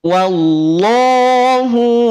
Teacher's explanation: Karakternya tipis, punya sifat istifal. Maka ketika setelahnya ada lafad Allah didahului oleh huruf waw berharokat fathah, maka lafad Allah menjadi tafkhim